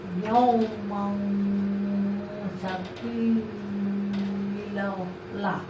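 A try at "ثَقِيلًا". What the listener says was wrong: লা একালি মাত্র উচ্চারণ করতে হবে।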